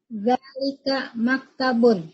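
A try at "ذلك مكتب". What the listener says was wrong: Mumtaz. Zalika maktabun. Ahsan.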